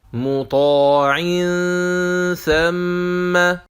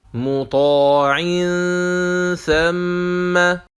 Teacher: If we see the effect of the Tha on Noon Sakina of Tanween, we will find that we will pronounce it hidden Noon with prolonged Ghunna at the point of articulation of Tha.